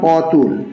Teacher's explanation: যেমন অতুল, অ, এখানে অ এর ওপর বেশি জোর দেওয়া হচ্ছে। অতুল এই শব্দের প্রথম অক্ষর অ এর উপর শ্বাসাঘাত হয়েছে।